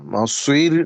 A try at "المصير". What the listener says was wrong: গোল করতে পারেন কিন্তু মাসির না সি বলা যাবে না সি বললে হচ্ছে সিন উচ্চারণ হবে হ্যাঁ একটু বেঁকা করতে পারেন মাসে মাসে সোয়ে সোয়ে এমন করতে পারেন